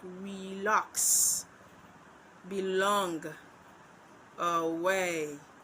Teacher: one of the syllable is unstressed, that's the very first one, while the second syllable is stressed. So, we can define the iamb as an unstressed syllable followed by a stressed syllable.